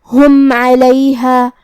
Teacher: عین کی ادائیگی حلق کے درمیان والے حصے سے ہے · کلمت ہم میم پہ جزم ہے، یہاں میم کا حکم ہے ابہار شفوی کیونکہ اس کے بعد حرف العین ہے. ہم میم کو ظاہر کریں گے اور بغیر غنہ کے حکم کو ادا کریں گے